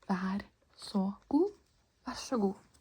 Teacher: It kind of sounds like a sh sound because the R and S get a little mashed up together when you say it quickly.